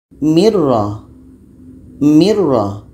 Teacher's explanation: Bunyi nun hilang masuk kepada ra dan tidak ada dengung. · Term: idgham bila gunnah